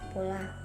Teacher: fonem P diucapkan secara lepas yang kemudian diikuti oleh fonem o